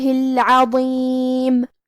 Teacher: کلمت العظیم میں حرف الضو ہے، اور ضو کی ادائیگی زبان کے سر اور اوپر والے دانتوں کے اندرونی کناروں سے ہے۔ وہ حروف تفخیم میں سے ہے، تو ہم یہ حرف کو موٹی آواز میں پڑھیں گے۔